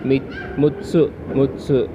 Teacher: the regular mutsu and the stress mutsu stress on the second we have a stress on the second syllable